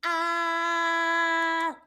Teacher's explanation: That's our first tone, okay? Nice and even. Ah, in a straight line, okay?